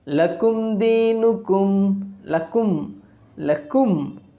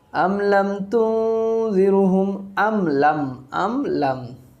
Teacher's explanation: After mim sakin, if we get any letter that is not ba and mim, then we have to pronounce the mim sakin clearly with its own makhraj. There will be no gunna. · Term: izhar